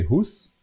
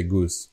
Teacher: We used to say goose, but now the g changed to h in Slovak, so we say hus, while the English say goose.